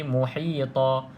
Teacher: Okey, kalau di sini tuan-tuan dan puan kita belajar tadi, kalau ada tanwin selari, kita kena baca jelas kan, muhitan. Tapi kalau kita berhenti, maka tidak boleh baca muhitan, kita kena buang satu baris dia, jadi muhita. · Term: mad iwad